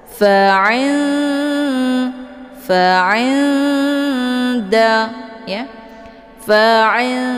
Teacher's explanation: Dengungnya ada cuman sedikit karena nun dengan dal itu makhrajnya saling berdekatan. Cara bacanya, nunnya tetap disamarkan, kemudian siap-siap masuk ke huruf dal. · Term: ikhfa aqrab